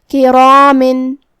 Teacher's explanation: मद्द अलिफ अपने पीछे वाले हर्फ का हुक्म लेता है तफ़ख़ीम में और तरक़ीक़ में, तो जो कि उससे पहले हर्फुल रा है और रा का हुक्म है तफ़ख़ीम, तो हम रा को और मद्द अलिफ को दोनों को भारी आवाज़ में पढ़ेंगे। किरामिन। आखिरी में हर्फुल मीम है और उसके नीचे तनवीन ज़ेर है।